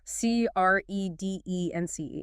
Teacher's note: 2 syllables. Stress on the first.